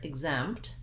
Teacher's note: Basically, in the word exempt, we have second syllable stress. So the zempt syllable is stressed and the ig syllable is short. So the letter X, basically is represented, the two sounds g and z are represented by one sound, but I think the syllable kind of breaks in the middle of that sound.